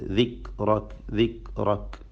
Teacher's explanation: അവിടെ ദിക്റക്ക് എന്ന് കാഫിൻ്റെ സുക്കൂന് ചലിപ്പിക്കാൻ പാടില്ല. ഹറക്കത്ത് പോലെ പറഞ്ഞു പോയത്.